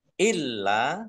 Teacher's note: lamnya dibaca dobel ada tasdidnya dia tampak maka ditekan